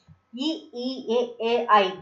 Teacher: வாய் திறக்கோட முயற்சியோட நாக்கோட அடி ஓரமா மேல்வாய் பல்லை பொருந்தும் முயற்சியில பிறக்குது